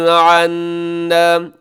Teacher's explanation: عنا اس میں نون مشدد پہ غنہ ہے